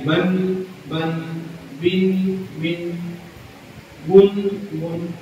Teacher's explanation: نون ساکن اور تنوین کے ادا کرتے وقت آواز ناک میں جاتی ہے